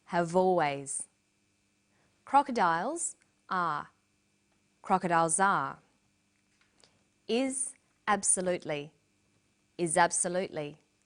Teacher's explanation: we link the final consonant sound V with the initial vow sound o have always crocodiles are crocodiles